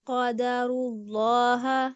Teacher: جی، لا کی آواز آگے سے کھل رہی ہے، اس کو دوبارہ پڑھیں. لا میں آپ نے تفخیم مکمل رکھنی ہے، آپ کی جو آواز اوپر اٹھے گی آگے سے آواز کھلنی نہیں چاہیے